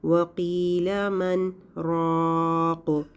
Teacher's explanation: ایک چھوٹا سا پوز، بغیر سانس کو توڑے ہم تھوڑی دیر کے لیے آواز کو روکتے ہیں، اس کو سخت کہتے ہیں۔